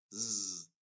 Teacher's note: Es como una S, pero hacemos vibrar las cuerdas vocales. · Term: Z inglesa